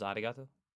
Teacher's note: lightly tap the gum Ridge behind your upper teeth with the tip of your tongue it should be a quick striking motion similar to The Sensation · character isn't is announced using an English R sound at all it's like a mixture between an r and an l sound